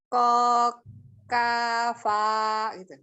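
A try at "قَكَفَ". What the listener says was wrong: Ya, Kokafa tapi tidak dipanjangkan.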